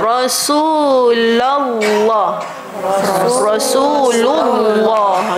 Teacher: dengan berbaris dammah dia tebal